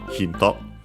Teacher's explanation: it's accented as expected, just like in English, so the first syllable